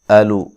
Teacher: حمزہ کو تحقیق سے پڑھنا ہے، لام کو لمبا نہیں کرنا